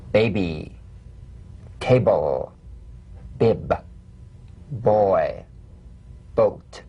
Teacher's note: Play this on the springing away from contact, not by pressing the lips together. You'll feel a gentle voiced pulsation on the lips like a delicate, crisp tap.